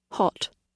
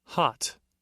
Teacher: Brits produce this sound with rounded lips, retaining that roundness that existed in the original aw sound. But Americans don't round their lips.